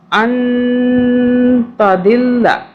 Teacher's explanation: نون پہ ہم پہ اخفا کریں گے، آگے تا آ رہا ہے اس لیے اخفا کا حرف ہے تا